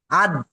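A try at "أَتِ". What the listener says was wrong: আদ বলবেন না দ বলবেন না ত বলেন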